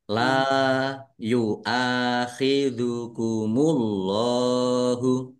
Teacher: Allahnya dibaca tebal karena harakat di depannya dommah.